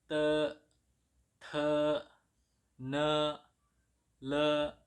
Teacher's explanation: T dibaca te, ada TH-nya